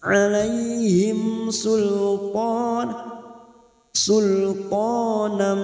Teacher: mim sukun bertemu Sin Idhar syafawi dibaca jelas